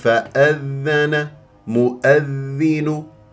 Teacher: الذال بجريان للصوت لا يجري فيها النفس ليست من احرف فحثه شخص سكت هذه لابد ان ننتبه اليها